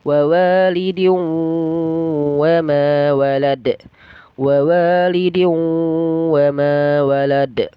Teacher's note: dan dalnya dipantulkan ya, dipantulkan atau qalqala.